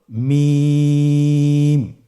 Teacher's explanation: হরফটির উচ্চারণ স্থান দুই ঠোটের শুকন স্থান থেকে উচ্চারিত হয়।